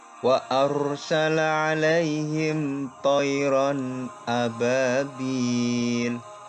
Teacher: Di sini ada ro sukun dibaca tebal, tafkhim.